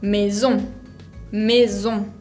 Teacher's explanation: el otro sonido que puede tener la S, que el castellano no tiene, es como si fuera Z, como un moscardón.